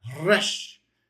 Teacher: There's definitely the trill in Hebrew. They have the R. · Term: R trill